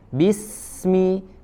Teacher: jadi tidak sekedar mengalir bis ya, tapi lebih ditajamkan lagi suaranya karena dia punya sifat as-sofir